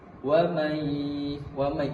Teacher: Wa may ini juga idgham bi gunnah atau idgham al gunnah, memasukkan suara nun mati kepada huruf sesudahnya, yaitu huruf ya